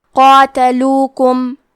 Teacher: کلمت قاتلوکم میں قاف کو اور مد الف کو دونوں کو بھاری آواز میں پڑھنا ہے